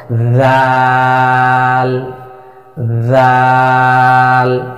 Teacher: জিহ্বার আগা সামনের উপরে 2 দাঁতের আগার সঙ্গে লাগিয়ে 4 আলিফ পরিমাণ টেনে উচ্চারণ করব। জাল, পাতলা আওয়াজে জাল জাল, এভাবে হরফের নামের মস্ক কমপক্ষে 100 বার।